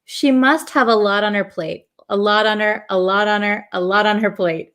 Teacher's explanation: this T in lot becomes a flap T, so it almost sounds like a D.